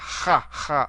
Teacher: It's related to the kappa, but it's a little more aspirated. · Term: aspirated kappa